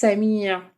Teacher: سین سب سے پہلے وہی حروف صفیریہ میں سے ہے، اس کو ہم نے جب پڑھنا ہے تو آپ کو سٹی کی آواز محسوس ہونی چاہیے · عین جو ہے وہ حروف حلقی کا لفظ ہے اور اس کو ہم نے حلق کے درمیان سے ادا کرنا ہے. الف کے اوپر کھڑا زبر ہے، ایک الف کے برابر کھینچ کے پڑھیں گے.